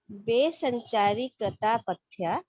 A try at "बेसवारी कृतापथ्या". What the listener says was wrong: बेसचारी नहीं है, बेसवारी कृता।